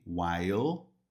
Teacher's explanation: I enjoyed it while, enquanto, esse while, observa que termina com LE, while, ó, mas a pronúncia fica no L lá em cima, com a língua lá em cima, no céu da boca